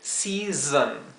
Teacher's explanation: la primera S se pronuncia zzz, la segunda S se pronuncia zzz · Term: S zumbada o vibrada